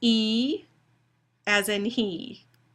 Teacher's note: that's a high front tense unrounded vowel